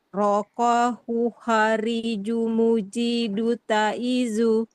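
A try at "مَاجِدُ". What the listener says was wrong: Majidu ya, bukan mo.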